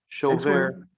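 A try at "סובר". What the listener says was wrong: It's sover, not shover. Sover. It's like a samach.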